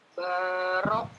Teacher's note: Ba-nya panjang dua harokat, ada alifnya.